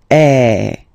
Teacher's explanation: So it's really open. I mean, the sound is really open, and normally your mouth should be opened a little bit more than with the accent aigu as well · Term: accent grave